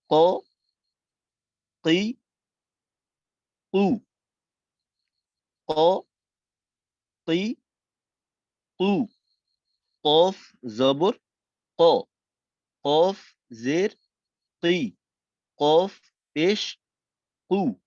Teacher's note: তো কফের হলো জিহ্বার গোড়ার থেকে, জিহ্বার গোড়া তার বরাবর উপরের তালুর সঙ্গে লাগাইয়া তারপর উচ্চারণ করতে হয়। তো কফের উচ্চারণটা হয় জবর দিয়ে, কফ জবর ক, একটু ধাক্কা দিয়ে জোরালো ভাবে বলতে হয়।